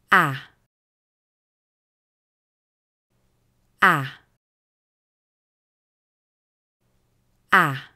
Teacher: кончик языка у нижних зубов тела языка опущена вниз и прижата к нижней челюсти и чтобы звук получился более четким опустите нижнюю челюсть резко вниз